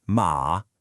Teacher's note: Think of a short, firm command like saying hey or no. It's that sudden drop in pitch.